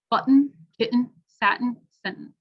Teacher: the glottal t which is a sound in your throat actually